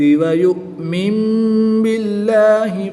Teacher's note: نون ساکن کے بعد حرف با ہے تو یہاں پر اقلاب ہوگا. نون ساکن کو میم سے بدل کر غنہ غمانی کر کے پڑھیں گے